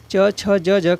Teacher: च, छ, ज, झ का उच्चारण स्थान कहाँ से होता है, तालु से होता है